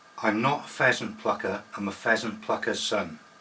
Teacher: there's a constant flow of air and that's passed over the teeth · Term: fricatives